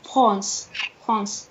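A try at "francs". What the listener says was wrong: On ne dit pas le S.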